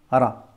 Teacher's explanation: Donc la consonne R roulée plus le A, ça te donne Ra.